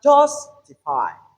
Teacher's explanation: the first one is strong and the second two syllables are weak. So I'm saying this to say that a stress syllable is not only loud but also longer than any other syllable.